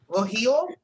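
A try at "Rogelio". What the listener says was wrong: You got Rohi, and then you need the EO.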